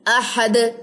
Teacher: دال جزم پہ کلکلا ہوتا ہے